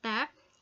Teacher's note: Tap occurs in first position or word initial and it's aspirated.